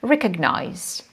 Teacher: In this case, we can see that students may have some problems pronouncing it with the right stress, because when we come back to the verb, we can see that stress goes to the first syllable